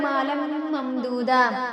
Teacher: ممدودہ کا پہلا میم جو ہے اس پہ تشدید ہے، تو اس وجہ سے یہاں پہ غنہ ہوگا۔